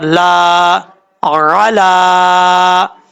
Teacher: عین زبر را، لام کھڑا زبر لا، علا. یہاں پر لام کے اوپر کھڑا زبر ہے، ایک الف کی مقدار لمبا کر کے پڑھا جائے گا. اب لام کے بعد یا ہے، یا کو پڑھنے کی ضرورت نہیں ہے.